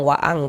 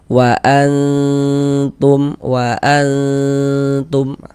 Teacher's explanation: Kalau ikhfa hakiki aqrab itu dia tidak condong berbunyi eng.